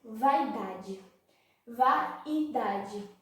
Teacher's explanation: A e o I estão juntos. O A é uma vogal e o I é uma semivogal. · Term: ditongo